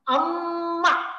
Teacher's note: काही जास्त काळ हवा अडवली गेलेली आहे, अवरोध स्थिती जास्त काळ राहिलेली आहे. म्हणजे काही ध्वनींचा उच्चार करताना बोलता बोलता अवरोध स्थिती जास्त काळ राहते आणि तिथं मग स्फोट व्हायला वेळ लागतो.